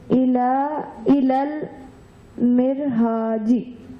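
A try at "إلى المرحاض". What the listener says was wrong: Not G.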